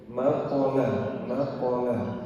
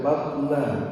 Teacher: ada qalqalah walaupun hanya sugra kecil tapi tetap dimunculkan